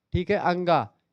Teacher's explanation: ये पूरे आपके का मतलब कंठ से निकलते हैं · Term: कंठ वर्ण